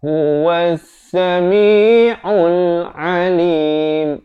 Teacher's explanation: Di sini ada lam syamsiah. Lam tidak dibunyikan.